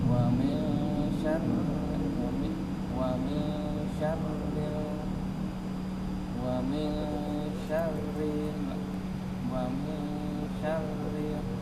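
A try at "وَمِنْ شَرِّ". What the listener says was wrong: Rinya panjang apa pendek? Rinya terpanjangkan karena tertegun di sini ya.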